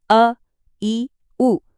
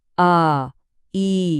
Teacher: ಅ, ಇ, ಉ ಹೀಗೆ ಒಂದು ಮಾತ್ರೆಯ ಕಾಲದಲ್ಲಿ ಹೇಳುವ ಹ್ರಸ್ವಸ್ವರ. ಆ, ಈ ಹೀಗೆ 2 ಮಾತ್ರೆಗಳ ದೀರ್ಘಸ್ವರ